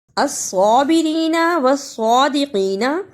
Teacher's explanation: الصابرین والصادقین دونوں میں صاد کو صحیح ادا کرنا شد اور کھڑی زبر کے ساتھ، اسے الصابرین والصادقین نہیں پڑھنا، صاد کی جگہ پر سین کی آواز نہیں آنی چاہیے